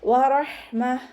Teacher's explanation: താ മർബൂത്തയിൽ വഖഫ് ചെയ്യുമ്പോൾ ഹാ സുക്കൂനിൻ്റെ സൗണ്ട് കൊടുത്തിട്ട് വഖഫ് ചെയ്യുക. വറഹ്മത്ത് എന്ന് പറഞ്ഞിട്ട് വഖഫ് ചെയ്യരുത്.